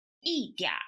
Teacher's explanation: The n sound is omitted, and is mapped onto the vowel a before it